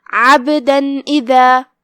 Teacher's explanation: ہم یہاں نون ظاہر کریں گے کیونکہ تنوین کی اصلیت اور اس کی ادائیگی نون ہوتی ہے اور بغیر غنہ کے حکم کو ادا کرنا ہے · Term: اظہار